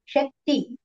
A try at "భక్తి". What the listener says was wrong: అది శక్తి కాదు మాతాజీ, భక్తి.